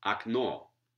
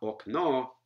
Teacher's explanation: in an unstressed syllable, there can't be any O vowels in this variety.